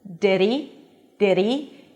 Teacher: Here, the he is unstressed and I dropped the H. Did he connected it to the previous word?